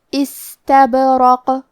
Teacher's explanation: کلمت استبرق میں سین ساکن ہے تو ہمیں سین کو ہمزے سے پڑھنا ہے، پھر یہاں حرف البا پہ جزم ہے کیونکہ با بھی حروف القلقلہ میں سے ہے تو ہم یہ حرف کو ہلاتے ہوئے یہ کلمہ کو پڑھیں گے